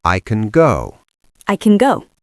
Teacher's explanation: In the positive sentence, I can go. The word can is a function word. It is grammar. So we reduce it. It becomes a schwa. It sounds like can.